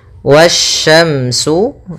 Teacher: di sini ada alif lam syamsiah yang mana alif lam dan Alif dan lamnya tertulis akan tetapi Alif dan lamnya tidak dibaca sehingga kita langsung baca ke huruf setelahnya